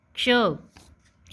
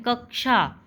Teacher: हम इसको बोलते समय आगे पहले क बोलते हैं, फिर हम श बोलते हैं। ठीक है, जैसे हम बोलते हैं कक्षा, तो उसमें 2 बार क का प्रयोग होता है। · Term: संयुक्त व्यंजन